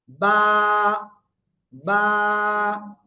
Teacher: দুই ঠোঁটের ভিজা অংশ থেকে এই অক্ষরটা উচ্চারণ হবে এক আলিফ টেনে উচ্চারণ করতে হবে